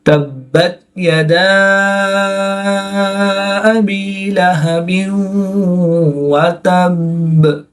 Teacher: الف مدہ کے بعد حمزہ دوسرے کلمے میں ہے تو یہاں پر مد منفصل ہوگی. 2 سے 3 الف تک کھینچ کر پڑھیں گے.